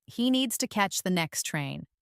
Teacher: Stress needs catch and train and let to the next be soft and fast. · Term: rhythm